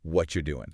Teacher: What are you doing? >> In a natural conversation that very often just smooshes into what you doing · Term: connected speech